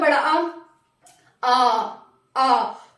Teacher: ऐसे स्वर जिनके उच्चारण में पूरा मुंह खुलता है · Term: विव्रत स्वर